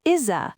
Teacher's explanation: Is ends with a Z sound. Begins with a vowel. Push it forward, is-a. So now we have it tis-a. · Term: consonant to vowel